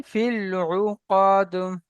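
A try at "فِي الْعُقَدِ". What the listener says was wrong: মাশাআল্লাহ, উকদ টান হয়ে গেছে, টান দেবেন না, উকদ।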